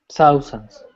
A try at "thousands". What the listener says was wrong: Yeah, don't forget the S at the end.